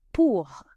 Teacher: Pour means for, and you can hear the R on the end. The R on the end of a word in French sounds almost like a harsh H sound.